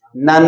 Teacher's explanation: اب جب نون کو نون سے ملائیں گے تو نن ایک آواز بنے گی، نن۔ اب نن جو ہے اس کو آپ نے لمبا کرنا ہے ناک کے اندر، تو آواز بن جائے گی نن۔ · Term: نون مشدد